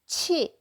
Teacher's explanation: Air gets out. You can hear the air is popping out, right? 지. Your throat gets intense and sending stressed out sound.